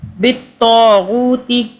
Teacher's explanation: تو کو جو ہے تا نہیں پڑھنا، تو پڑھنا ہے، منہ بھر کے پڑھنا ہے. بالطاغوت، تی کو جو ہے کھینچنا نہیں ہے.